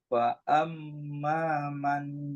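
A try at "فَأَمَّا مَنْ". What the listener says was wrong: Amma dengungkan.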